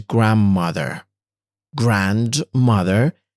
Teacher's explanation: with the D sound being assimilated into the M sound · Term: assimilation